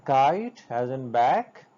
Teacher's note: K sound as in kite, as in back, and this k sound is velar when we talk about the place of articulation, and stop or plosive when we talk the manner of articulation.